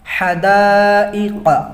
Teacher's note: تو یہاں پہ حرف مد ہے کیا؟ الف، الف کے بعد پھر حمزہ، حمزہ اسی کلمے میں ہے، تو یہ بھی مد متصل ہے